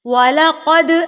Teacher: جب یہ والی علامت کسی حرف کے اوپر آ جاتی ہے تو اس کو ساکن کر دیتی ہے. ٹھیک ہے، تو دال حروف قلقلہ میں سے ہے، اس کو ہم یہاں پر تھرتھراہٹ سے وائبریشن سے پڑھیں گے